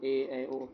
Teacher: सा होता है इ इ उ उ हो गया फिर आपका अर्ध संवृत है मुख द्वार लगभग आधा बंद रहता है